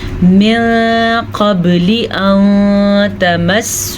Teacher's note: پھر سے اخفاء کا قاعدہ ہو رہا ہے کیونکہ نون ساکن کے بعد قاف ہے جو کہ حروف اخفاء میں سے ہے